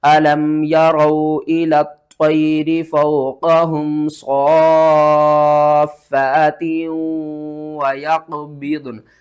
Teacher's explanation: اور صاد کو کھینچ کر فا کے ساتھ ملانا ہے، فا کو پھر 1 الف کے برابر اوپر کی طرف کھینچنا ہے · وقف کی صورت میں ضاد اور نون دونوں ساکن ہو جائیں گی، اور قاف کے اوپر آپ نے قلقلہ کرنا ہے اور صاد کو کھینچ کر فا کے ساتھ ملانا ہے، فا